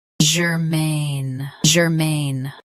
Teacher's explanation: Both US and UK have the same pronunciation of this word. Stress, main. Keep ger soft and quick. Germaine. Germaine.